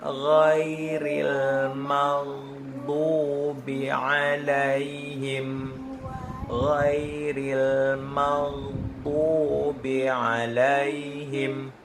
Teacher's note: ghain sering terjebak dengan pantulan